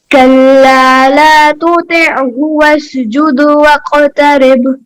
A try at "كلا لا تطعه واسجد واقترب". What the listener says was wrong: طا نہیں صحیح نکل رہا، تا اور طا میں فرق کیجیے نا. کلا لا تطیعہ واسجد واقترب.